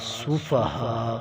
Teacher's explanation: ہا کے اوپر مد ہے، اسے 4 الف کے برابر کھینچا جائے گا